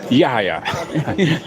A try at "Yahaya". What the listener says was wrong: No, pronounce the H hard. Yahya.